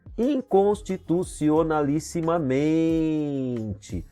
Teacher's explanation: O mente aqui é pronunciado com mais força, é a sílaba tônica, é paroxítona.